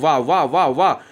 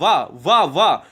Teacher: अब जब व बोलोगे तो इसमें देखो दांत भी लग रहा है, दंत लग रहा है। दंत व और ऊंठ भी लग रहा है। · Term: दंत्योष्ठ व्यंजन